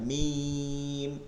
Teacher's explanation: মিম হচ্ছে এই দুই ঠোঁটের শুকনা জায়গা